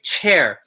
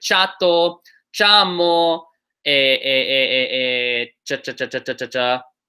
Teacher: there's a lot of air that leaves your mouth when you go cha